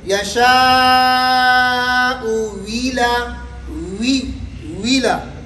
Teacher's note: اب پہلے حمزے پر پیش ہے, دوسرے حمزے کے نیچے زیر ہے, تو دوسرے حمزے کو پہلے حمزے کے حرکت کے مطابق واو متحرکہ سے تبدیل کریں گے